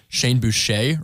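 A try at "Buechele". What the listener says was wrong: There's an L in there.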